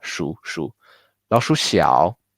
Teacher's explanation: this 鼠 is super fast light third tone 鼠 老鼠小 almost sounds like a neutral tone 老鼠小 The rats is small, right?